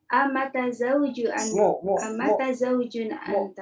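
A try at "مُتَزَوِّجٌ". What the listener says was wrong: Mutazawwijun, bukan mataza, mutaza. Amutazawwijun anta, amutazawwijun, gitu ya. Sebutannya susah nih. Za-wa, habis za-wa soalnya. Za itu ujung lidah, waw bibir, dekatan, jadinya agak susah. Mutazawwijun, ya. Ja yang kedua, itu ja yang ada.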